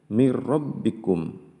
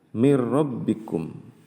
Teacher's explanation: dalam satu kalimat maka disebut dengan hukum bacaan Idgham bilagunnah yaitu memasukkan huruf ro ketika bertemu dengan nun sukun tanpa mendengung